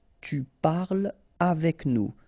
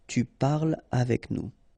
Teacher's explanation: So no liaison here between parle and avec